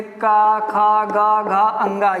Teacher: जैसे कंठ से कौन सा बोला जाएगा, का वर्ग। ये जो पूरा का वर्ग है, जैसे का, खा, गा, घा, अंगा, ये सभी कहाँ से बोले जाएंगे, कंठ से बोले जाएंगे